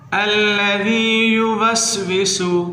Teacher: الذی یوسوس، الذی، ذال کو نرمی سے ادا کریں، الذی یوسوس، سین کو سیٹی سے ادا کریں